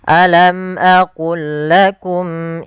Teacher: Maka ini kita namakan, yang kami belum tuliskan di sini, ini kita namakan dengan idgham idgham mutamasilain, yaitu huruf-hurufnya sama dari makhraj dan sifatnya, yaitu cara membacanya memasukkan langsung lam yang pertama kepada lam yang kedua tanpa ditahan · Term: idgam mutamasilain